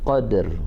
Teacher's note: ada huruf qalqalah diikuti huruf ra dengan suara rendah